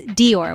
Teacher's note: Dior with a soft d and a stress on or